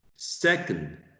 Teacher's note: First syllable stressed, se, and the second one, the second syllable is unstressed. So you use a schwa.